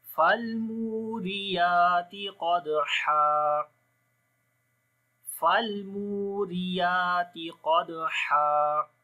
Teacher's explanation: فالمو، لام کے اوپر اسی طرح توسط ہوگا، فالمو فالمو، مو کو لمبا کریں گے، واو مدہ ہے یہاں پر، را کے نیچے زیر ہے، باریک پڑھیں گے، یا کو لمبا کریں گے، کھڑی زبر ہے، تا کو بھی باریک پڑھیں گے۔